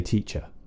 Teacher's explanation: So usually in RP we would say teacher. We don't pronounce the R at the end